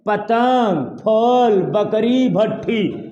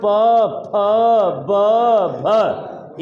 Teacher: अब आते हैं ओष्ठ पे, पतंग फल बकरी भट्ठी, जैसे बोले हम प फ ब भ, एक ओठ दूसरे ओठ को स्पर्श करते हुए इन वर्णों को बाहर फेंक रहा है